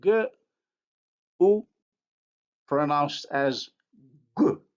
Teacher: The consonant assimilates the rounding of the vowel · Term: labialization